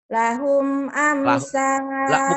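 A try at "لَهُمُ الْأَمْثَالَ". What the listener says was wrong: Bukan lahum. Lahul amsala.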